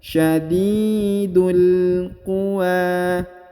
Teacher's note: Huruf du langsung ke huruf lam yang berharokat sukun, alifnya tidak dibaca